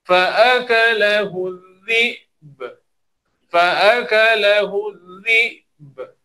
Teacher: Jadi tekan pada hamzah, sukunkan hamzah, qalqalahkan ba secara lemah.